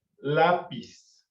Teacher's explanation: la fuerza la tiene la primera sílaba